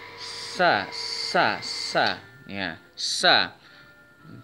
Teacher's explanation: Sin termasuk huruf hames, berarti ketika membaca harus ada udara yang dikeluarkan dari mulut kita. Sa. Bisa dicek dengan menempelkan tangan kita ke depan mulut kita.